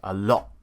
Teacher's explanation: when they're at the end of a word, for example, a word like a lot, I would probably just say a lot and drop that T, a lot, and I cut the T out, a lot, just because that's what British people do. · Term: glottalize the T